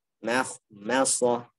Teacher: Yang tebal hanya kha sama shad. Mim tipis.